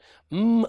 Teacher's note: the M and the ker right mmm and purr are both bilabial sounds they're made with the two lips coming together